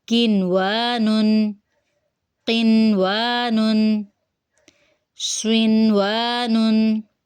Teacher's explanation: یعنی نون کی آواز کو ظاہر کریں گے، بجائے اس کے کہ نون ساکن کے بعد واو آنے کے ادغام ہو، نہیں ادغام نہیں کریں گے بلکہ ہم یہاں پہ اظہار کریں گے۔